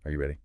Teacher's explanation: For yes, no questions, the voice usually goes up at the end. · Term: lift